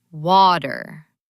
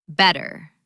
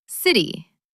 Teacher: when a T is in the middle of a word between two vowels, it changes. It becomes a soft D sound. · In British English, they might say water with a very clear T. But in American English, that T turns into a soft D. It becomes water. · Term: disappearing T